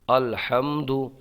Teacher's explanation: حا میم زبر حم الحم دال پیش دو الحمد یہاں پر میم ساکن میں اظہار شفوی ہوگا